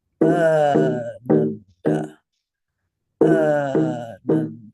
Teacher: Two beats for the first syllable.